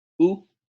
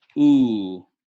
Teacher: they are exactly again the same sound just one is longer than the other